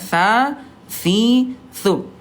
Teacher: huruf tsa kan ujung lidah disentuhkan dengan ujung gigi seri atasnya